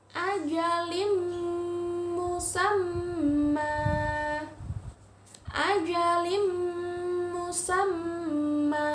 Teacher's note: Berdengung ya. Tanwin bertemu dengan huruf mim. Ditasydidkan, dimasukkan.